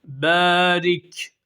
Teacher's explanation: B A ile E arasında bir ses çıksın bir elif miktarı meddi tabei yaparak okuyalım